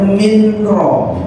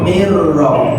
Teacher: Yusqauna minro, tulisannya minro, dibacanya mirro. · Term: idgham bila guna